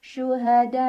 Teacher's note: thbiinya Alif sebelumnya fathah hamzahnya yang i pada kata syuhada maka cara bacanya dipanjangkan harus lebih dari dua empat atau lima harakat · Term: mad wajib muttasil